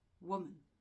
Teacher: woman is actually 2 syllables. And the stress is on the first part, woman. And so we have the accent mark here, just after the first syllable, or the one that you have to stress, which indicates that this is where you have to put the stress.